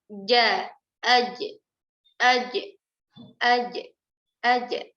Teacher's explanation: Bagian tengah lidah kita naik ke atas, ya, naik ke langit-langit. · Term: huruf jim